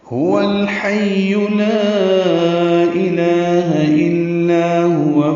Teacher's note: ہا اقصى حلق سے نکالیں گے، واو ہونٹوں کی نا تمام گلائی سے ادا کریں گے، الحی کے لام سے ملائیں گے، اظہار قمری ہوگا.